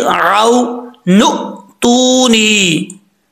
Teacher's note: अब इसके बाद है वकाला फिर राउ नु तूनी, नून के बाद ये अलिफ है, अलिफ के बाद हमजा है साकिन, झटके से पढ़ा जाएगा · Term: हमजा साकिन